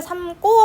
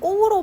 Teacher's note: 근데 고개를 삼고 할 때는 꼬로 발음이 납니다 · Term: 된소리대기